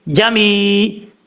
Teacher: अब इसके बाद है जमी अन, जीम जबर जा, मीम या ज़ेर मी, जमी, यहाँ पर या मद्दा है, एक अलिफ की मकदार लंबा करके पढ़ा जाएगा